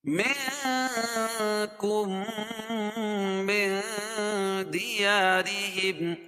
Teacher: نون ساکن کے بعد حروف اخفاء کے 15 حرفوں میں سے دال ہے تو یہاں ناک میں آواز کو چھپا کر پڑھیں گے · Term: اخفاء حقیقی